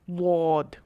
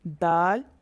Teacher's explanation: ضاد اس کو موٹا پڑھنا ہے، دال اس کو باریک پڑھنا ہے۔ ضاد اس کا مخرج زبان کا کنارہ اور اوپر کی داڑھوں کی جڑ ہے۔ دال اس کا مخرج زبان کی نوک اور آگے کے دانتوں کی اوپر مسوڑوں کے ساتھ جب زبان لگتی ہے تو دال ادا ہوتا ہے۔